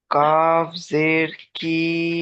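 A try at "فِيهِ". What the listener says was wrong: এটা কাফ জের নেই, দেখেন ভালো করে দেখেন। ফা ইয়া জের ফি। হা খাড়া জের হি। ফি হি, ফি হি।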